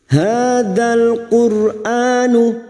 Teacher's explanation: Ra sukun yang didahului dhammah kita baca tafkhim atau tebal